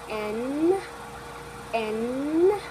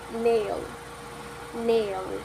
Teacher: Then we have the phoneme n, n, which is voice, lingual-alveolar, nasal. The manner of articulation is nasal because the velum is lower and the air passes through the nasal cavity